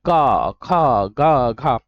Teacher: जो वर्णों का जैसे आप का बोलेंगे तो आपके में जो कंठ है यहां से आवाज आ रही होगी